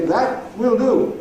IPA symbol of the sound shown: wɪl